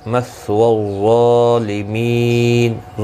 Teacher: ظا حروف مستعلیہ ہے، پر پڑھا جائے گا